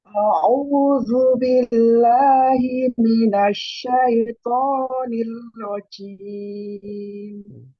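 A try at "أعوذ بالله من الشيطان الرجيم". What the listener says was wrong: Pakai ain coba, Bu. A'udzu.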